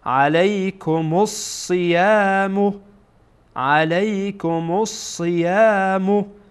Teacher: یعنی وقتی که از حروف شمسیه باشه این الف لام خوانده نمیشه. این الف لامی که اینجا میبینید خوانده نمیشه.